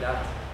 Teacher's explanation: many other consonant changes in Moselfränkisch, where all the s's become a t. We don't say das, we say dat.